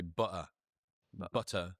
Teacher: It's two Ts in butter and they're not saying either of them · being from the northeast of the UK, we have a glottal stop typically. So, people will say "butter".